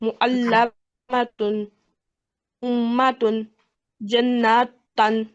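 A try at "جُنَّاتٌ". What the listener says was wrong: जुन पेश है, जुन्नतन।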